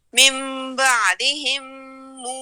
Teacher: اگر موسیٰ کے آگے ہمیں حمزہ ملتا نا پھر تو ہم نے اس کو لمبا کرنا تھا، لیکن چونکہ موسیٰ پہ ہمیں ایک الف کے برابر کھڑی زبر مل رہی ہے تو ہم نے کیا کرنا ہے، اس کو ہم نے ایک الف کے برابر ہی کھینچنا ہے